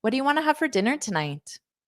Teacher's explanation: it's not a yes no question. So there won't be a rising intonation.